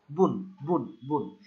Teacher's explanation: আমরা যদি বা দুই পেশ বুন বলি দেখেন ঠোটটা লেগে যাচ্ছে